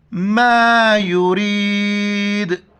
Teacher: یریدو تو وقف کریں گے، آخر میں جھٹکے کے ساتھ پڑھیں گے، قلقلہ کریں گے